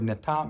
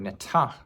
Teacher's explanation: The only difference is the aspiration on that T.